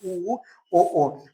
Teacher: ओष्ठ जो होते हैं वो गोल हो जाते हैं। बिल्कुल वृत्त के आकार के हो जाते हैं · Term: वृत्ताकार स्वर